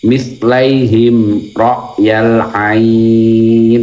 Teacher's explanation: ain ini baca 2 sampai 5 ketukan